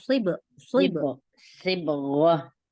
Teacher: Iya. Ya, tapi shotnya kurang tebal, jadi kayak sin. Naikkan pangkal lidahnya.